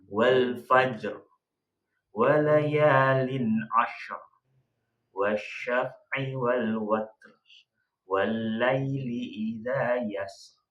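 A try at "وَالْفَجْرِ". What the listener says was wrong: Jadi ketika kita itu membaca yang tadi itu dihilangkan unsur tasydidnya. Jadi langsung jangan ditekan. Nah, gitu langsung aja.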